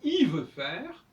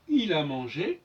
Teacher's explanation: le L disparaît, ne doit pas s'entendre quand il est devant une consonne, mais il peut s'entendre devant une voyelle.